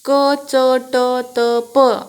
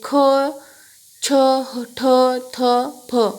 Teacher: सगळ्याला ह चा उच्चार होतोय म्हणजे ते महाप्राण आहेत